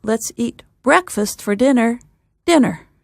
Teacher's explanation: the two words that get extra stress are breakfast and the second dinner